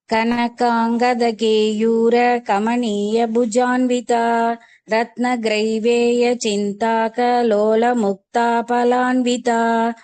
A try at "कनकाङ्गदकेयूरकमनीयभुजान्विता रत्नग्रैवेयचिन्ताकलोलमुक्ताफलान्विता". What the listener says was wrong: very good Kavita